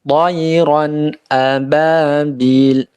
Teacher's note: Kemudian toiron, ini juga lin juga, toiron. Ronnya dibaca idhar ya, karena setelah tanwinnya adalah huruf alif